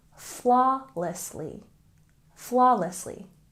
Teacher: And flawlessly, we stress the first syllable, flawlessly, flawlessly.